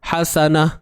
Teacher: Kita berhenti pada ta dan bunyinya jadi ha lah.